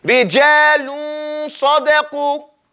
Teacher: The point is to get that noon almost pronounced, then you start with the sad, within two counts.